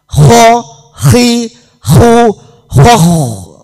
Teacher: Nggih, kadang wonten sing terlalu nggih malah akhirnya wonten dengkuran niku. Kalau kho lah niki harus ada dengkuran.